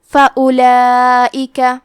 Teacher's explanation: کلمت فَأُولَئِكَ میں حرف الواو ہے، ہمیں واو کو ظاہر نہیں کرنا ہے، الف کو پیش سے پڑھ کے حرف اللام کو پڑھیں گے۔